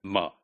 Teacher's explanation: In nasal sounds, the first nasal is m. It's bilabial, but the velum is down and the air passage is allowed through nasal cavity.